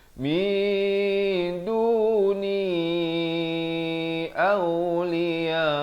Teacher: Samarkan kadar panjang 2 harakat. Nak kata nun pun tidak, dal pun tidak. · Ba 2 harakat, di 2 harakat. Mi di sini disamarkan, bukan min. Kalau min jadi izhar. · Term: ikhfa hakiki